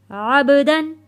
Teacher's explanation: با کے اوپر جزم ہے، با حروف کلکلہ ہے۔ کلکلہ کہتے ہیں آواز کا واپس پلٹ کر آنا، یہاں آواز واپس پلٹ کر آئے گی